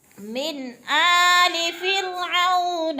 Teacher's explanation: نون ساکن کے بعد آگے حمزہ حروف حلقی میں سے ہے تو اخفاء نہیں کریں گے بلکہ اظہار کریں گے